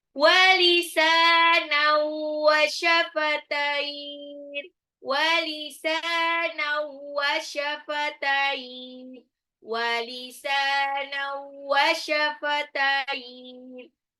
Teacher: Walisanan, sinnya dua harokat, nunnya tanwin ketemu waw, itu kan birunah. Nah, jadi langsung dilebur tapi ditahan